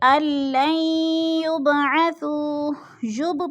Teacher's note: با ساکن ہے اور حروف قلقلہ میں سے ہے تو ادھر قلقلہ ہے، ہلا کر پڑھنا ہے